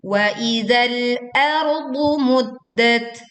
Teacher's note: Muddat, tekan dal bertasydid lalu bersukun, berwaqaf di tak sukun dengan mengeluarkan angin tetapi tidak berlebihan